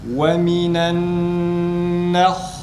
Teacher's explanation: nunun fethasını okurken e sesi arkadaşlar. Ha'da ise yine tam a sesi. Ve minen nah, nunun harekesini okuduktan sonra ağzımızı açıyoruz ve ha güzel çıkmış olur.